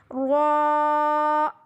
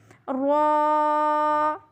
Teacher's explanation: را پہ جب زبر ہو تو را موٹی پڑھی جاتی ہے، آپ نے یہاں پہ موٹی آواز میں نکالنی ہے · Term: زبر والی را